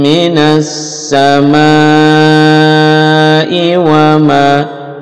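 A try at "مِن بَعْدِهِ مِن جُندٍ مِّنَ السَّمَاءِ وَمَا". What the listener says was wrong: Sama panjang.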